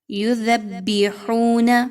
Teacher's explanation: دال اور با کو مضبوطی کے ساتھ ملائیے، لیکن یاد رکھیے دال کو آپ نے زا کی طرح نہیں پڑھنا